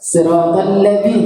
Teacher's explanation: Dzal syaratnya dengan tepat wajib keluar hujung lidah, celah-celah antara gigi atas dengan gigi bawah. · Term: huruf dzal